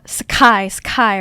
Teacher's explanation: Because of the S sound here, helps stop the aspiration from K, helps stop the blast of air. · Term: Gokkai